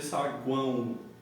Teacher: esse O é uma semivogal, porque ele tem um som aqui de U